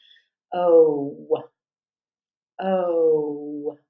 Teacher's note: in the O vowel your closing sound is going to be that of the w w w as in what so having that close closure of